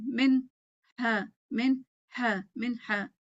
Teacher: نون کو پھر اس کے اپنی صفات کے ساتھ پڑھا جائے گا، ہا کو اپنی صفات کے ساتھ ظاہر کیا جائے گا، دونوں کو الگ الگ ظاہر کیا جائے گا. ٹھیک ہے، تو یہ یاد رکھیں کہ جب اظہار ہوتا ہے تو اس میں ہر لفظ کو اظہار الگ الگ کیا جاتا ہے اس کی تمام صفات کے ساتھ.